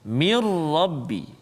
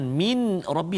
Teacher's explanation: Kesempurnaan huruf nun bunyi itu hilang, masuk dalam ra. Mirrabbi, jangan min rabbi, salah. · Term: idgham bila gunnah